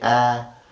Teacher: When you say A, there is no closure or no plosion or friction.